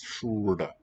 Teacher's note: Nice thing about this syllable is the consonant at the beginning and the one at the end. They're both these curl tongue ones. Shrewd. So your tongue can just stay in that shape.